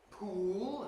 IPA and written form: puːl (pool)